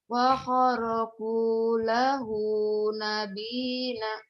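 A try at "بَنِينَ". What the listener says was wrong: Nabi siapa? Nabi Nabi siapa? Banina. Kok jadi nabi? Wa kharaqu lahu banina.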